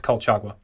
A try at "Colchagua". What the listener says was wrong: No, they don't pronounce the G. It's like a hua. So, Kohawa?